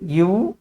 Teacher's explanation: மேல்பல் கீழிதல் இணைவதால் பிறக்கும் எழுத்து இவ் ஆகும்.